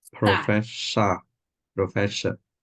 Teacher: It's got to be an S and not an SH.